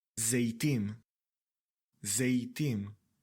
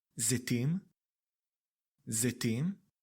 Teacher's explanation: Sometimes you may hear Tsere pronounced as 'ey' rather than 'e'.